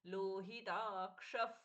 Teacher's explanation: क्ष में छ का उच्चारण नहीं होगा मूर्धन्य श होगा क के साथ में श